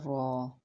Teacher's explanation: The articulation point مخرج of the letter ra is the tip of the tongue touching slightly behind the upper front gums without sticking to the hard palate. It is vibrating sound produced when the tip of the tongue flutters quickly near the gums. It belongs to the vibrating letter category in tajweed.